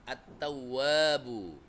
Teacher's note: langsung alif lamnya nggak dibaca, langsung masuk ke huruf ta.